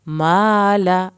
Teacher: وَتُحِبُّونَ, لام کو نہ ہلائیں یہاں پر. مالا, ما الف کو کھینچیں, لام کی زبر کو نہیں کھینچنا